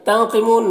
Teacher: نون میں اخفا اور نون کی آواز کو ناک میں چھپا کر پڑھیں گے ، قوف کو پر پڑھیں گے، حروف مستعلیہ میں سے منہ